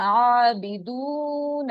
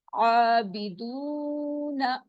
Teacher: نون کے اوپر زبر ہے، یہاں صرف 1 کاؤنٹ اسٹریچ کرنا ہے، اس کو لمبا نہیں کرنا